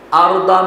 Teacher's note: ارض میں را کو پر پڑھیں گے اور ضاد کو ضاد پڑھیں گے نہ کہ ضاد پڑھیں گے.